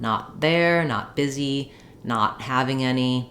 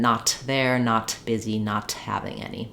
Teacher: don't say not there with a break I say not there I make the T by stopping the air and then I release it into the next consonant sound